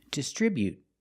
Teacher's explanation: With the T at the end, after the vowel, you can make a stop T sound. · You don't have to release the T. You can say distribute, but you don't have to.